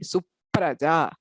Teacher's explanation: So Su, you have the U, then P and R. So there is a vowel, consonant, and another consonant. Basically two consonants together. So the first of that consonant is doubled.